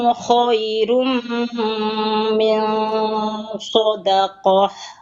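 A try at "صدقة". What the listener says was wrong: Ha biasa, bukan bukan ha. PR PR yang prioritas itu fathahnya bukanya ke sampingnya, jangan ke atas. Kalau ke atas nanti jadi tebal. Ya, jadi tebal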